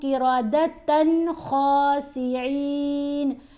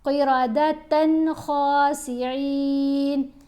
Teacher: غنہ نہیں کریں گے، کیونکہ خا آ رہا ہے تنوین کے بعد تو حرف حلقی میں سے ہے ، اس لیے یہاں غنہ کیے بغیر پڑھیں گے، قردة خاسئین،